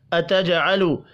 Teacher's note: واو کے اوپر چھوٹی مد ہے، واو کو 3 الف کے برابر کھینچ کر پڑھنا ہے۔ اتجعل، جیم ساکن پر قلقلہ کریں گے